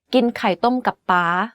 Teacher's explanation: The last word and syllable of this sentence is in high tone. You can hear that it's the only word in this sentence that has a high pitch without a falling tone.